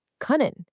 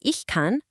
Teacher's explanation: The stem completely changes from an uh to an ah in the singular forms